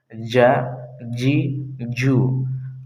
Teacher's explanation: جیم ادا ہوتا ہے زبان کے بیچ، اور اسی کے سامنے اوپر کے تالو سے ادا ہوتا ہے، ج، جی، جو۔